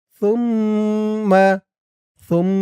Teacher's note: ওয়াজিব গুন্না হরকতের পরে মিমের উপর তাসদিদ।